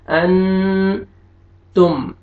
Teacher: اخفا کرنا ہے، نوز میں ساؤنڈ لے کے جائیں گے